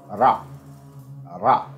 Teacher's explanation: pronounced as a voiced alveolar tap or flap. Ra, ra. Or as a voiced alveolar approximant.